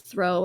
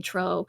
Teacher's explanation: frequently like th sounds and things will be replaced by just a t sound, so like the word throw ends up being tro. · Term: Cork accent